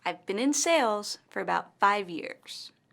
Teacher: in this sentence the word sales and five years are stressed